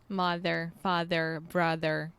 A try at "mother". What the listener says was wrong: Remember that in the words mother and brother, this is actually the schwa sound, o som do schwa. So I'm almost hearing you say mother, but it should be mother.